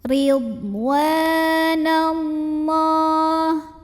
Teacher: Lam pada lafaz Allah dibunyikan secara tafkhim karena huruf sebelumnya nun berbaris fathah. Maka cara bacanya adalah ditebalkan, pangkal lidah dinaikkan.